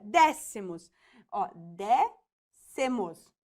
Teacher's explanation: sílaba tônica porque ela tá acentuada a gente sabe né que a antepenúltima sílaba é a mais forte